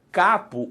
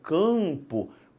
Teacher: parte do A, capo, o ar sai inteirinho pela boca. Quando eu falo campo, parte do A vai para o nariz. Por quê? Porque a sua língua sobe um cadinho e empurra esse A para o céu da boca, fazendo uma nasalização.